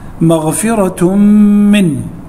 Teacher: عندنا التنوين بالضم وبعده حرف الميم، والميم من حروف الإدغام بغنة